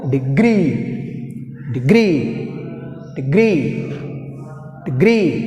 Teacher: Stress falls on the second syllable. Degree.